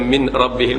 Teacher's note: Kalau dibaca min ra, itu bukan idgham, itu izhar. Min rabbihim, kita menzahirkan bunyi sukun pada nun.